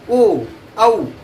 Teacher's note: कंठ आणि प्लस त्या ठिकाणी ओठाचा थोडासा संबंध येतो, ओ औ. जसं की आपण ऊ चा उच्चार करतो तशा पद्धतीने ओ आणि औ या ठिकाणी याचा जो उच्चार आहे तो थोडासा आपल्याला ओठाचा भाग या ठिकाणी संपर्कात येतो. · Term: कंठोष्ठ